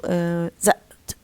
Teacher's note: You say, for example, tan, and when it comes after s, it loses this aspiration, and you say spill. And when it comes at the end, it's sometimes preceded by glottal stop